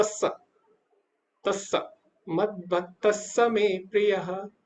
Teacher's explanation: विसर्ग की जगह एक सा लग जाएगा